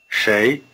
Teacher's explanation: 谁 You may be hearing shay as beginning with an English sh sound, but there is a slight difference. The tongue is curled back in the retroflex position for the consonant of shay. It's the same sound you had in shi. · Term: R-flavored sh